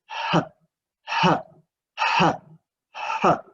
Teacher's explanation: the last place of articulation is glottal, which connected with glottis.